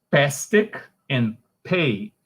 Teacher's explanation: the omission of the liquid l in cluster pl